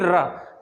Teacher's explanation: क्योंकि रा का उच्चारण करते समय हमारी जीभ की नोक कंपन करती है, वाइब्रेट करती है। आप बोल के देख लीजिए रा, तो इसलिए इसको प्रकंपिक के कंपन जात बोलते हैं।